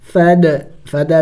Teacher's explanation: دال ساکن ہے حروف قلقلہ میں سے ہے، قلقلہ کریں گے یعنی ہلا کے پڑھیں گے